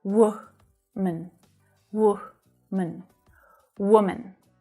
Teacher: that's the schw sound it's really soft and it's low in Pitch almost not there you don't hear wo man that second syllable is reduced wo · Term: schwa sound